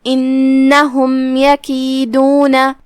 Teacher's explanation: کلمت انہم جو کہ الف کے نیچے زیر ہے تو ہم حمزہ کو نیچے سے پڑھیں گے. پھر نون پہ تشدید ہے, تشدید کا دھیان رہے, 2 حرف کے برابر نون کو ادا کرنا ہے. آخری میں میم پہ جزم ہے, یہاں میم کا حکم ہے اظہار شفوی, ہم بغیر غنہ کے یہ حکم کو ادا کریں گے اور میم کو ظاہر کریں گے.